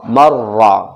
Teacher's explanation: میم رازہ مر، را زبر را، مر را، را کے اوپر زبر ہے موٹا پڑھا جائے گا